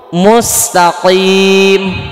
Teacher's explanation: pangkal lidah dekat tenggorokan sejajar dengan langit-langit lunak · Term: huruf qaf